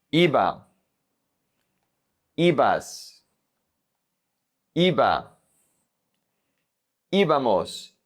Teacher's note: If you notice, in this conjugation, the emphasis is always on the I.